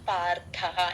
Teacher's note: ర కింద థ వత్తు మహాప్రాణం